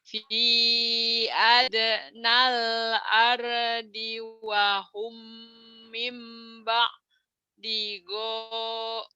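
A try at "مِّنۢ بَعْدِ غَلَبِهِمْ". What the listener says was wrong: Go-nya pendek. Mimba di gola bihim.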